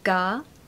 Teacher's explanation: Stress the first syllable. So gar, no R, of course.